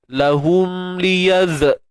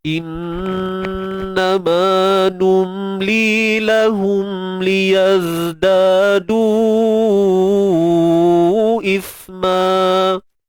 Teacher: Cuma ingat huruf zai ni dia bersifat rakhawah, suara yang mengalir. Dan dalam masa yang sama dia ada sifat desiran yang kita kata desir ataupun yang tajam, iaitu sifat safir.